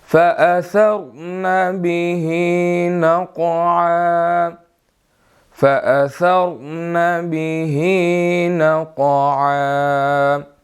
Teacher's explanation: اس میں جو ہے وہ ثا ہے، یہاں پر سین نہیں پڑھنا